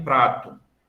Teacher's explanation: como a gente faz em prato, um R mais brando, né? Que é chamado de TEP